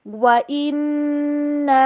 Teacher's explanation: اِنَّا پہ غنہ، اور اس کے بعد اس کو لمبا کریں گے